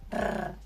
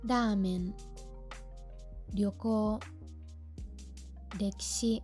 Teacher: Las R's suaves, por favor. Los japoneses no pronuncian las R's como una metralleta como nosotros.